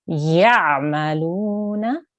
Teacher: make sure you have an ain sound. It shouldn't sound like the hamza.